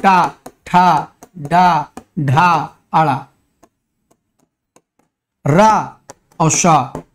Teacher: ट ठ ड ढ ण र और श ये सब क्या हैं? ये मूर्धा से बोले जाते हैं।